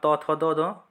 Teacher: त, थ, द, ध ये दंत से।